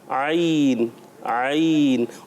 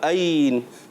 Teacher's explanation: आइन हलक के दरमियान वाले हिस्से से और जो है हमज़ा जो है हलक के नीचे वाले हिस्से से